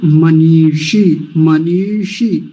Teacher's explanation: मनीषी बड़ी की मात्राएं हैं दोनों, तो लंबा खींचना है